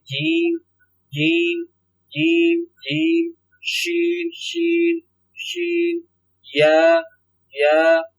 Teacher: ये जबान का दरमियानी हिस्सा और तालू का दरमियान हिस्सा ये आपस में टकराएंगे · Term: रूफे शजरियन